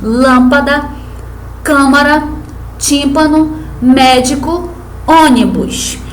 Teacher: penúltima sílaba exemplos de palavras paroxítonas útil tórax leque retrato passível proparoxítonas são aquelas em que a sílaba tônica se evidencia na antepenúltima sílaba